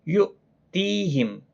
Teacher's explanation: حمزہ ساکن کو جھٹکے کے ساتھ پڑھا جاتا ہے۔ تی یا مدہ ہے، میم ساکن کے بعد حمزہ آیا ہے، اظہار شفوی ہوگا۔